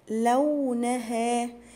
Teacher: الصاد من حروف التفخيم وكمان من حروف الهمس